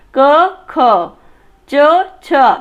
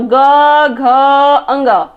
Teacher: जो अघोष होता है वो कंपन करते हुए उच्चारण नहीं होता, लेकिन जो सघोष होता है उसमें आपके जो स्वर तंत्रियां हैं उसमें कंपन होती हैं